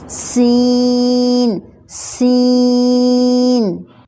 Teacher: بالکل صحیح سیٹی کی آواز آنی چاہیے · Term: سیٹی والا لیٹر